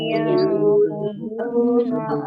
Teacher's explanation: Alladzina, ya, dzal kasroh, ya sukun, ini mat tobi'i, kemudian nun sukun bertemu dengan huruf qaf, ini bacaan ikhfa, dibaca samar-samar